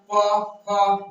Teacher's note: प फ जितना बोलिएगा आपका जी ओठ सटेगा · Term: ओष्ठ